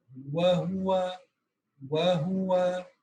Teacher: واو نکالتے ہوئے آپ کے ہونٹ گول ہو کے آگے آنے چاہیے